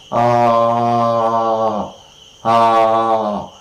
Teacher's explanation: Tongue is very low position, and hence we say that is, alright, an open vowel.